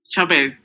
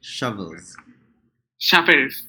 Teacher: it's a short U sound, or what we call as the accented schwa.